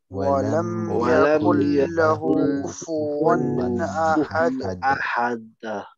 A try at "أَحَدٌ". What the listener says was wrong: no, if you say أحد then it becomes like a شدة it's أحد bounce أحد not أحد don't make it like it's Yeah, don't make it like it's gonna stick and then it's gonna pull it out. Ahad, it's like that. It's meant to be ahad, just like a bouncing ball. Ahad, yeah, nice and soft. It just touches it and comes out.